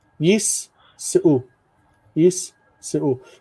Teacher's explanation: the dagesh represents two sins. So one closes the syllable, yis, and the other one opens the next syllable.